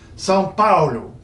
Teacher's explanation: Well, in Portuguese, the O at the end of a word, and it's quite common, always floats up when it's sitting there in that unstressed position, just floats up from O to U.